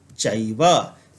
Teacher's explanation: तो यहाँ पर जब इन दोनों को हम लगातार उच्चारण करते हैं, इन दोनों को पास पास रखते हैं, तो यह अ और ए मिल करके एक तीसरा ही वर्ण ऐ बनाते हैं